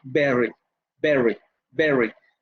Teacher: La primera es bilabial oclusiva con los dos labios y con un golpe